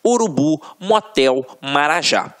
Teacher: Só a título de exemplificação, observem aqui, ó, oxítonas. A última sílaba é a tônica